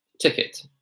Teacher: Now, in received pronunciation, of course, you would say ticket. You would say the T.